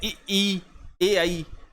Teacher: जिन स्वरों के उच्चारण में जीभ मुंह के अगले भाग पर टकराती है उन्हें अग्रस्वर कहते हैं